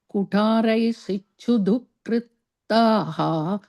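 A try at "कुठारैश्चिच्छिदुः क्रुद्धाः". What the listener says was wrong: The second line, kru, u sound, dukruddhaah.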